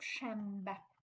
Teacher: sözün ortasında n-dan sonra b-m hərflərindən hər hansısa biri gələrsə, n-m kimi tələffüz olunur.